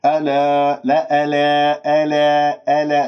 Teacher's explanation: ألا، لا ألا، ألا، ألا، الباعد بين الفكين، اللسان مرتاح، لا تبتسم بالشفاه حتى لا تطلع ألف ممالة